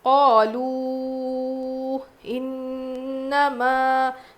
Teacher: نون پہ تشدید غنہ کریں گے